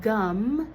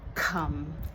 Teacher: prevocalic voicing is where kids improperly turn on their voice before a vowel, like gum instead of come.